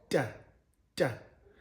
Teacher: it's an alveolar sound, dental alveolar. So your tongue is placed in the at the beginning of the alveolar ridge.